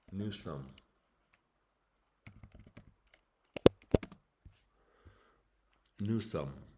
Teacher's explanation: So it sounds like it's kind of like it's a O sound, but it's not stressed. So it's a 10, but it's unstressed.